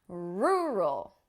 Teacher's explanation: the key is to really stress the first syllable